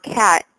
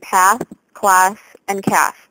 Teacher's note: Americans also keep the flat a of the word cat in path class and cash